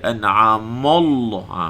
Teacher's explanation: An'amallah, an'ama, ma tu mesti nipis. An'amallah, Allah tu tebal. An'amallah, Allah tanpa muncung.